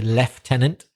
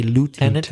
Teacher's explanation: most British people say leftenant and Americans say lieutenant